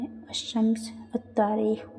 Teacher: حروف شمسی مطلب کہ ان کے قبل جب عربی کا الف لام آتا ہے تو لام کا تلفظ نہیں ہوتا ہے، اور لام کے بعد کا حرف مشدد ہو جاتا ہے